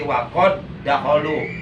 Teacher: Berarti dal sukunnya wajib diidghamkan, dimasukkan ke dalam huruf dal yang ada di depannya. Jadi waqad dahulu, tidak boleh dikokolahkan, tidak boleh waqad dahulu, tidak boleh. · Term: idgham mutamasilain